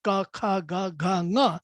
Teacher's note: you will see that the tongue doesn't move from that velar back position